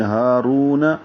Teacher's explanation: ہا کھڑا زبر ہے، 2 حرکات لمبا ہوگا، 1 الف کے برابر. ہا سے حلق سے نکالیں گے. · ہا سے حلق سے نکالیں گے. رو را پر ہے، واو مدہ ہے، 2 حرکات لمبا کریں گے